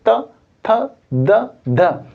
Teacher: यहां पर जो त थ द ध न ये जो है इनका जब हम उच्चारण करते हैं तो जीव हमारी दांत को टच करती है